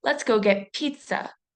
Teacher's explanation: If I say, let's go get pizza, notice my emphasis on the P consonant sound at the beginning of the word pizza. If you hold your hand up to your face, you can feel a puff of air when you say pizza. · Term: overexpressed burst